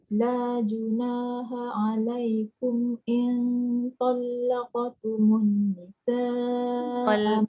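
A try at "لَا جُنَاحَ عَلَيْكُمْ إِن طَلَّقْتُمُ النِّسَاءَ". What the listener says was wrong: In talaqtumun. Dengung dulu. Tekanan pada lam tu. In talaqtumun. Tumun tu tak cukup. Tumun tu tak cukup. Tumun.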